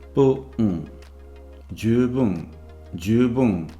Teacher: Note here that the drop in pitch is between a normal syllable and the nasal.